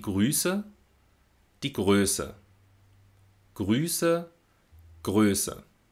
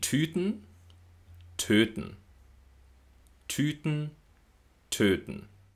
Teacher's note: im Vergleich zum ü hebt sich die Zunge beim Öl etwas weiter hinten nach oben Richtung Gaumen also vorne natürlich aber ein bisschen weiter hinten als beim ü